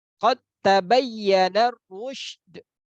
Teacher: Nah, di situ huruf dal masuk langsung ke huruf ta. Qad ta, bukan qad tabayyan. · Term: idgham